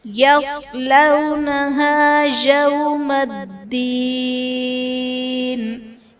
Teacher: صاد حرف مستعلیہ ہے، پر پڑا جائے گا، واو ساکن سے پہلے حرف پر زبر ہے، یہاں پر واو لین کا قاعدہ ہوگا